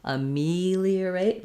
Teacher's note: So letter A is going to sound like it's going to be vowel schwa. Then our stress is on the me syllable, ameliorate. Letter E is going to say the E sound that we usually spell with E or two E's, ameli.